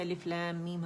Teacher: پڑھا، لیکن ہم کیونکہ یہ دونوں اکٹھے لکھے ہوئے ہیں تو اسے ربط کے ساتھ پڑھیں گے، پوز نہیں آئے گا، آواز نہیں ٹوٹے گی، سانس نہیں ٹوٹے